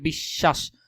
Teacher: ব ফলা যদি শেষে থাকে সেটার দ্বিত মানে ডাবল উচ্চারণ হয়।